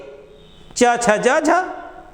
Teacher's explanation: फिर नेक्स्ट हम लोग देखते हैं बाबू, कहता है स्पर्श संघर्षी व्यंजन उच्चारित करते समय जीवा ऊपर उठ करके ताल को स्पर्श करती तथा हवा को मुख विवर से निकलने में संघर्ष का सामना करना पड़ता है